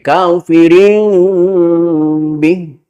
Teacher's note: Membaca iqlab itu tidak menekankan kepada suara mim 100%, tapi ada ikhfa'nya, bukan kafirin, tapi kafirin bih.